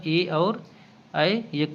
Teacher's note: ए और ऐ कंठ तालव्य में आएगा